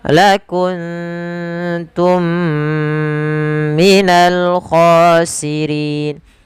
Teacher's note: Cara membacanya ditahan suara mnya sepanjang dua harakat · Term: idgham mimi